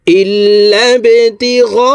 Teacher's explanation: গইন এখানে 4 আলিফ টেনে পড়তে হবে, কারণ মদের হরফের উপরে মোটা চিহ্ন বামে হামজা মধ্যে মুত্তাসিল 4 আলিফ টানিয়া পড়িতে হয়।